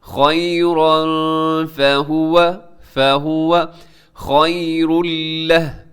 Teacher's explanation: یہاں پہ اخفا ہو رہا ہے، تنوین کے بعد فا ہے جو حروف اخفا میں شامل ہے